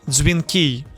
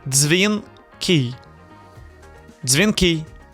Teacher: The correct way, dзвінки. You have to say dz as a one sound, no d plus z. One sound, dz.